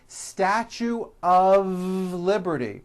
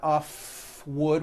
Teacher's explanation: mistake even though the word of is spelled with an f we pronounce the word of with a voiced v